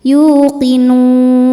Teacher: Maka nun itu panjang, boleh 2 atau 4 atau 6 harokat asal konsisten dalam sekali duduk.